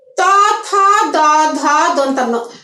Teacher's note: জিহ্বার আগা তোমার দাঁতের সাথে এসে লাগছে, পুরো দাঁতের সাহায্য নিয়ে এটা উচ্চারিত হচ্ছে